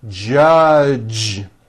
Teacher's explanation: This voiced J sound comes at the beginning and at the end of the word judge, judge. Now, the mistake that many foreign speakers make is that they unvoice the J sound at the end of a word.